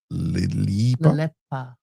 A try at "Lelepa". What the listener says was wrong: No, but you're carrying the E then.